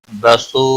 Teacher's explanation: مد منفصل ہے تین الف کے برابر کھینچ کر پڑھیں گے